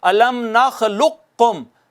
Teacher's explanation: قاف اور کاف قریب المخرج ہے نا دونوں، یہ ساتھ اکٹھے آگے پہلے کو دوسرے میں ضم کر دیا تو اس کو کہتے ہیں ادغام متجانسین۔